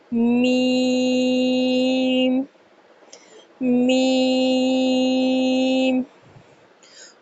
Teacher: میم دونوں ہونٹوں کے خشک حصے سے ادا کیا جاتا ہے، یعنی جو ہمارے ہونٹ کا باہر والا حصہ ہے جس پہ ہم گرلس جو ہے لپسٹک لگاتی ہیں وہ والا حصہ، اس حصے سے میم کی ادائیگی کی جاتی ہے۔ میم حروف شفاویہ میں سے ہے، یعنی میم ہونٹوں سے ادا ہونے والے حروف میں سے ہے